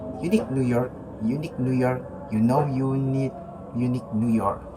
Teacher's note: Tips mulai dari bunyi ju seperti ya lalu langsung o. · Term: diphthong